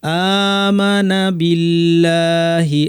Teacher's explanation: আল্লাহের লামটা এখানে পাতলা কারণ আগে জিয়ের।